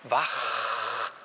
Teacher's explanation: Da merken Sie sogar, dass sich da Ihr Zäpfchen bewegt.